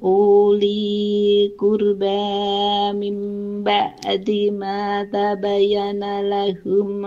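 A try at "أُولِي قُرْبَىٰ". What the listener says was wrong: Kembali di uli ya, itu Ibu, itu u-nya pendek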